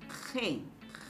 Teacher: retrae a la zona posterior por eso es también de largo no hay vibración de las cuerdas vocálicas entonces es sordo · es un sonido que presenta un escape del aire, una salida del aire por la lengua y la cavidad velar. Entonces decimos que es un sonido fricativo. Pero a la vez la lengua se retrae a la zona posterior, por eso es también velar.